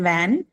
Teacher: v has a stronger vibration